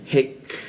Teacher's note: ketika lidahnya diturunkan ada hembusan udara ketika membaca k mati